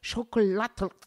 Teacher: A lot of the languages in that part of the world have an L in the end. You know, you have sort of a guttural stop in your throat when you say it